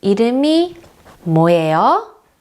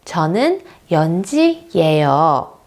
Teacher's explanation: For example, 이름이 뭐예요? We raise the intonation at the end to initiate that it's a question. If I'm stating something, for example, my name,.